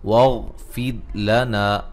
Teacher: गैन को मोटा अदा करेंगे, रा साकिन से पहले ज़ेर, रा को बारीक पढ़ा जाएगा